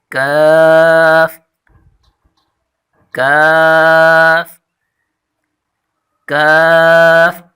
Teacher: زبان کی جڑ کے قریب سے اس کے مقابل پر جو سخت تالو ہے اس سے لگے تو وہاں حرف کاف نکلتا ہے